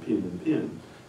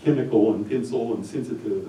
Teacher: had a merger of the vowels in pin and pen. He pronounced both of these the same.